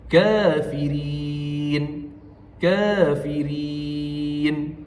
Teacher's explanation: Kafirin juga boleh dibaca dengan empat harakat. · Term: mad arid lisukun